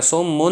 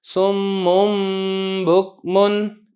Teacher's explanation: دوسری مثال دیکھیں نون تنوین کی، سمن، یہ نون تنوین تھی، جب آگے با آ گیا تو میں نے اب اس کو نون تنوین نہیں پڑھنا، سمن نہیں پڑھنا، بلکہ پڑھنا ہے سمم بکمن، اس طریقے سے کہ نون تنوین کی جگہ میں میم پڑھوں گا